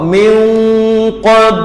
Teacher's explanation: Min qablu la yuwalluna min, fa hakiki dengan qaf, standby nak sebut qaf. Min qab, qalqalah sughra, bunyikan qalqalah pada ba.